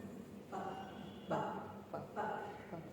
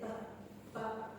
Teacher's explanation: I release it, yeah, through my lips, putting together upper and lower lips. Ba, ba. See, can you feel the air stream coming up? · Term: plosive